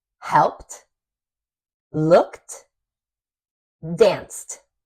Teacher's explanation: the voiceless sound sounds like a t